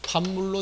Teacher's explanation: 그래서 요 경우에 있어서 우리가 해결될 수 있는 것은 이렇게 되겠죠. 비읍과 미음이 만났을 때 미음을 받아서 비읍이 미음되는 거죠. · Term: 비음화